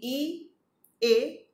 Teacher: જીભના આગલા ભાગથી ઈ, એ અને વિવૃત એ નું ઉચ્ચારણ થાય છે.